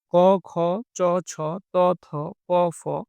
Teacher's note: এবং কিছুগুলোতে স্বরতন্ত্র কম্পিত হয় না। সেগুলো হচ্ছে অঘোষ ব্যঞ্জন।